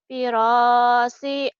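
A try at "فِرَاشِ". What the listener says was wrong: firasyi, shin gede, ayo.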